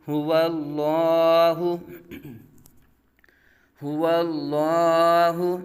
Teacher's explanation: لام سے پہلے واو کے اوپر زبر آ گیا، اب لام کو کیا کریں گے؟ پر پڑھیں گے